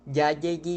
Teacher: la confusión de la consonante conocida como doble l con la y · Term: yaísmo